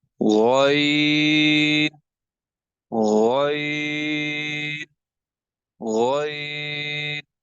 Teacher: Ghain again will has to be read pur. It has to be uttered from the upper part of the throat.